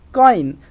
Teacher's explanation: As we say coin, so o, that diphthong oi, oi starts with o and it moves towards e and it becomes oi, and the word is pronounced as coin.